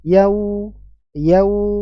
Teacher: dengan mengumpulkan dua bibir kita kumpulkan dua bibir bawah dan atas ke depan diikuti dengan menaiknya pangkal lidah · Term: huruf wau